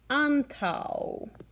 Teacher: Note how both of the A's say ah.